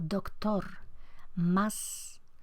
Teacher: el refuerzo y la fortaleza de la consonante implosiva hace que la vocal sea más breve, más cerrada. Cuanto más fuerte es la consonante implosiva, más breve, cerrada y más se acorta la vocal.